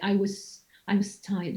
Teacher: t has an influence on z, and it's going to devoice the z sound into a s sound. So in fact, you say I was tired.